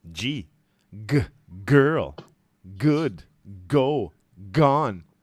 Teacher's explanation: g girl good go gone all right gold gold yeah right we blocked the air at the throat we add voice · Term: plosives